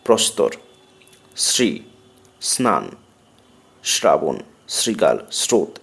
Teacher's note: ত, থ, দন্তন্য, র, ল এবং রি এই বর্ণগুলোর পূর্বে থাকলে স অর্থাৎ তালবস্য এর স ইংরাজি এস এর মতো উচ্চারিত হয়